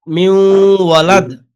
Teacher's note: দাল কলকলা হরফ ধাক্কা হবে